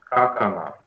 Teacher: звонкие взрывные в начале слова оглушаются